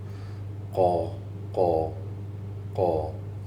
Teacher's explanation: the back of your tongue goes towards your palate